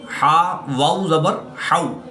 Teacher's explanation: واو ساکن سے پہلے حرف پر زبر ہے تو یہاں پر واو لین ہوگا، اس کو لمبا نہیں کریں گے بلکہ بغیر لمبا کیے پڑھیں گے